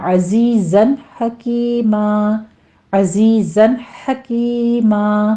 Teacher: وَكَانَ اللَّهُ میں لفظ جلالہ پر پڑھا جائے گا، عزیزاً حکیمہ میں زائی کی آواز سیٹی کی ادا کرتے ہوئے آگے یا مد ادا کریں گے، اور تنوین کا قاعدہ اظہار حلقی ہے، یہاں پہ آپ نے لمبا نہیں کرنا